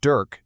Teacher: The E doesn't really have its own sound here. All you really hear is the R. It all comes down to the letter R. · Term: R colored vowel